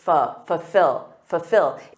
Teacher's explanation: native speakers often drop that first L I do and say fill F so instead of saying full